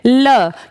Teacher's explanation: पार्श्विक है ल, क्योंकि जब आप इसको बोलते हैं तो आपकी जबान जहां टच हो रही है उसके साइड से हवा बाहर आ रही है